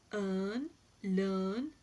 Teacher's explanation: This sound is described as a central unrounded vowel between half closed and half open position, and it occurs initially, medially, and finally in the words earn, learn, So this is the sound, the long sound.